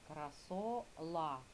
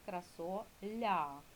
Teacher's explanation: пом'якшений ль це не звук л твердий якби в нас був твердий то було красола, а в нас красоля.